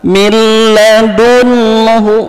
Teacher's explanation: maka tidak pakai dengung maka suara n-nya masuk ke huruf lam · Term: idgham bilagunnah